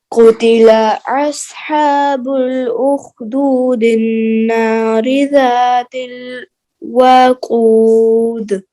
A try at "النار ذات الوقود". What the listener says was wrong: وقود لمبا نکلنا اچھا اذ هم علیہا قعود